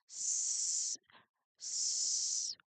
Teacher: Because the s is a voiceless sound, your vocal cords should stay completely quiet. S, s. If you place your hand on your throat while you produce it, just like what I did, you should feel no vibration at all.